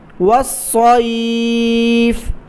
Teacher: واو کو صاد کے ساتھ ملائیں، صاد کو موٹا پڑھیں